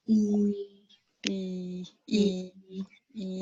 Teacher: Queen bee is a high front vowel. It means my jaw's closed, E, and my lips are retracted in a smile.